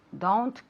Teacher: it's not done it's don't it's like an o u sound